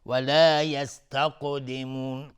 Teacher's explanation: قاف هم از حروف استعلاء و قاف اینجا قلقله میخواد چون ساکنه